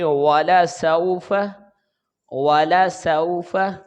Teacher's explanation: سین کے اوپر زبر ہے، آگے واو ساکن ہے، تو یہ واو لین ہے، تو اس کو نرمی کے ساتھ گول آواز کے ساتھ ہم ادا کریں گے، اور فا کے اوپر زبر ہے تو اس کو جلدی ادا کریں گے۔